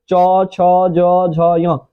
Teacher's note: अब बात है च वर्ग का तो च वर्ग जो है च वर्ग बजाता है तालू से च छ ज झ य आप बोल के भी देखिएगा तो